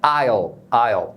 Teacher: você pronunciar o L mais para o fundo da garganta, como se você abrisse mais espaço lá no fundo para sair esse som do O. O que é diferente do que a gente faz na língua portuguesa, porque em português, geralmente o L final é pronunciado com um som de U. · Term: dark L